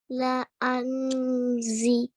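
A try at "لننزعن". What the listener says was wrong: Okay, so there's a noon, which you have to join to the noon with the sukoon on top. Nanzi. لَنَنْزِئَنَّ.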